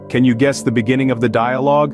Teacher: notice how your vocal chords vibrate each time you pronounce the G sound in guess beginning and dialogue feel the power of the G sound resonating from your throat